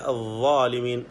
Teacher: വാ പറയുമ്പോൾ നാവും മുൻപല്ലുമാണ്. നാവിൻ്റെ അറ്റം പുറത്ത് കാണും.